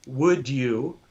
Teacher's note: It's a combination of the D and the Y. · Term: assimilation